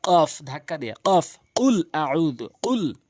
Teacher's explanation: জিহ্বার গোড়া উপরে তালু থেকে কফ ধাক্কা দিয়ে